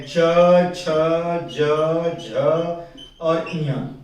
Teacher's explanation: च वर्ग जो उसमें है वो स्पर्श व्यंजन भी कहलाता है और साथ ही साथ संघर्षी भी कहलाता है, ये पूरा च वर्ग। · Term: स्पर्श संघर्षी